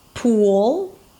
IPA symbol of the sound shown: uw